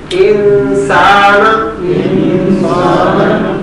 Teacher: نون ادا نہیں ہوگا بلکہ غنہ ادا ہوگا